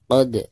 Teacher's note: Dan huruf qalqalah di sini itu posisinya ada di tengah-tengah bacaan, berarti dihukumi qalqalah sugro. Dibacanya tetap dipantulkan namun dengan suara pantulan yang tipis ya.